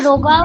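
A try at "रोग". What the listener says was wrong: রোগা, ইংলিশে লেখা আছে বলে ওটা রোগা উচ্চারণ হচ্ছে, কিন্তু ওটা উচ্চারণ হবে রোগ, রোগা। সংস্কৃতকে রোগা বলে।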